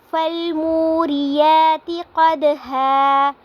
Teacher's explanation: منہ پہ واو مدہ ہو رہا ہے کیونکہ واو ساکن سے پہلے پیش آ رہی ہے تو اس کو ہم نے ایک الف کے برابر لمبا کرنا ہے